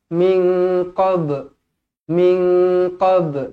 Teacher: Nun kosong bertemu dengan Kaf ikhfa Hakiki dengung dua harakat